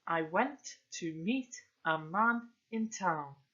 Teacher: iambic tetrameter, and that's where we've got 4 stressed syllables